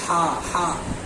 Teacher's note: बीच हलक पर जोर पड़ेगा · हा को भी मखरज के साथ अदा करना है बीच हलक ह अदा होता है